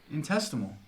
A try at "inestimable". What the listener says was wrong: Inestimable. The S comes before the T.